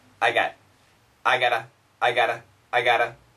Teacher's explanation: the quicker we say I've got the quicker we say it sometimes you don't hear the V